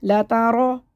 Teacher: رو کو موٹا پڑھنا ہے کیونکہ رو کے اوپر زبر ہے، جب بھی زبر یا پیش ہوگا تو موٹا پڑھیں گے.